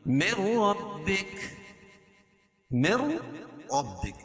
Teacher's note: نون کا را میں ادغام ہوگا لیکن غنہ نہیں ہوگا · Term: ادغام بلا غنہ